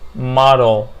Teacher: model okay, it's a ال L قبلها vowel sound, right? So it's pronounced dark L like model